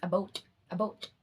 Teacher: same goes for the infamous word about about becomes a boat a boat in Canadian pronunciation